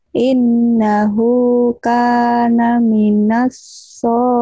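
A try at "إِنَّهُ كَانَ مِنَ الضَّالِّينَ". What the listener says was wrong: Mina, kan ada titiknya, ada titiknya. Bukan so, tapi do. Minal, minal do. Innahu kana minal dhalin.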